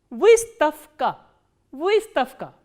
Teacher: The voiced consonant will be pronounced as its voiceless counterpart, which is f.